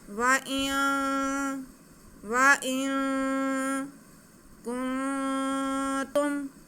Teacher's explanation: हम नून की आवाज़ को नाक में छुपा के पढ़ेंगे, एक अलिफ के बराबर गुन्ना करते हुए पढ़ेंगे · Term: इख्फा